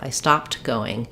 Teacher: if I want to be really clear that I'm making it past tense, I have to let that t out.